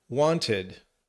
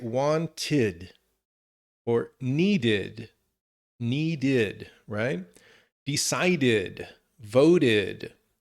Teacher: There are three ways: the id, the t, or the d. So the only time we say id, or kind of like a separation of the syllables, is when the last consonant is t or d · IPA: /ɪd/